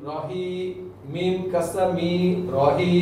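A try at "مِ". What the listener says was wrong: টান দিয়েছেন কিন্তু মি বলেছিলেন মিম কাসরা মি হ্যাঁ এটাই তো ঝামেলা আমাদের এই যে এখানেই তো ভুলগুলো হয় মিম কাসরা মি রাহিমি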